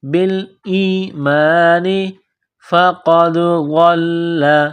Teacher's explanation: قاف ہے نقطوں والا بڑا قاف، اس کو موٹا کرنا ہے، دال کے ساتھ ملانا ہے۔